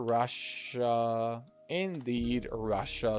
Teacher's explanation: It is Russia with a sh sound where the two S's are.